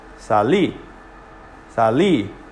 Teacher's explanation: Hear how I hold the I just a moment longer? But also listen to the noise level. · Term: emphasis